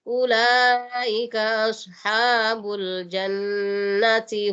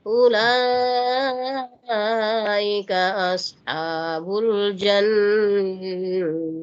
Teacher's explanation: kita bunyikan seperti bunyi ha karena kita wakaf di situ ya. Tapi kalau kita tidak wakaf langsung sambung. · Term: ta marbutnya